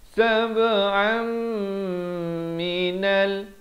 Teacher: Daripada sab'an jadi sab'am, tapi jangan lupa dengung dua harakat. Sab'an minal, nun bari atas naik di atas lam. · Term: idgham bi gunnah